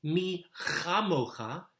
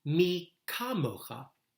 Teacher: And in the second verse, the letter appears with a little dot in it, as if the hockey puck is in the net. And the difference turns the pronunciation from that clearing the throat sort of a ch sound to one that's just like our English letter K